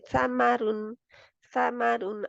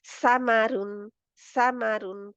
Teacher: सा की आवाज बारीक और नरम यानी के थन और सॉफ्ट होती है